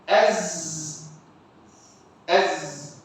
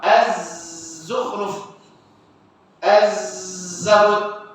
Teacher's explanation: Bila mana terdapat pada huruf zai. Bila zai dia kubra. Jadi safir dia tu dia lebih kuat. lebih besar.